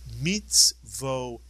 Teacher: Whenever a kamatz and a yud come inside a word, the vowel makes the same sound as the kamatz itself, simply ah.